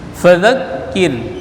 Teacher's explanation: kir ini dibaca tipis ya, sebelum ra baris kasrah. Fadzakir in nun mati jumpa dengan nun idgham bi gunnah atau ma'agunnah dibaca dengung.